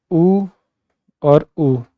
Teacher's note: अब आप बोलेंगे ऊ, तब आपके होठ राउंड होते हैं, लिप्स राउंड होते हैं